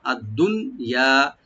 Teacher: মাতা উদ্দুনিয়া, মাতা মিম ওপেন, তা ওপেন আর আদ্দুনিয়া দুন, দালের পরে যে নুন সাকিন আছে এখানে যেন এটা এজাহার স্বভাবী এজাহার মাতলাকে বলি, এজাহার মাতলাক, এখানে আমরা নুনটাকে আমরা এজাহার করে পড়বো, এখন গুন্না হবে না বা এদগামও হবে না